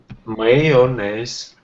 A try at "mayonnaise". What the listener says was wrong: Mayonnaise. Don't forget the O. Mayonnaise. Because we pronounce it like this. Mayonnaise.